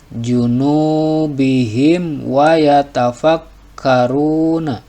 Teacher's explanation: mim sukun menghadapi huruf wau namanya izhar syafawi jadi membacanya harus jelas jadi mim sukunnya tidak boleh dengung